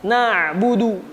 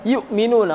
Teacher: ain ini enggak terputus kayak hamzah